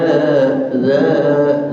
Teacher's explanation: dza makhrajnya di ujung lidah